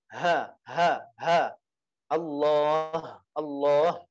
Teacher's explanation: ha itu ada di tenggorokan paling bawah tenggorokan yang paling bawah · Ha, hi, hu, Sedangkan ha, untuk ha yang tebal itu, yang ini, itu apa? Di tenggorokan yang bawah, dan dia itu agak tebal.